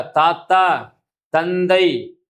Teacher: மேல்வாய் பல்லினுடைய அடிப்பகுதியை நாக்கினுடைய நுனி பொருந்துதல் என்ன செய்து பிறக்கின்றன.